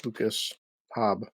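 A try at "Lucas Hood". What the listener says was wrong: Hood. Hood. You said Hobb, it's Hood.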